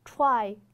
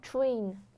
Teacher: 大家会注意到我的口型受这个 r 的影响，是会有点点嘟的